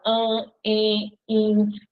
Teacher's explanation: as vogais no meio da palavra diante de m e de n vão ficar com o som nasal